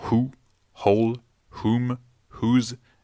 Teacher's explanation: on ne prononcera pas le W, mais uniquement le H